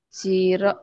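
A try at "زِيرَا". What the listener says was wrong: A ini rnya panjang. Ah kan ada alif tuh.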